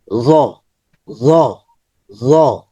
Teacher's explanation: জিহ্বার আগা উপরের দাঁতের আগাতে লাগবে